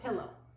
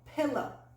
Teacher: In this word, we stress the first syllable